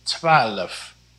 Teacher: almost like there is an extra vowel in between the l and the f